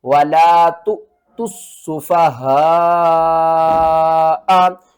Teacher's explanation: سین کو 2 بار پڑھنا ہے، اور سین کے اوپر سختی کرنی ہے۔ یہاں پر ہم نے تا کو حمزہ کے ساتھ ملانا ہے، اور حمزہ کو ہم نے جھٹکے کے ساتھ پڑھنا ہے، وَلَا تُؤْتُوا السُّفَهَاءَ۔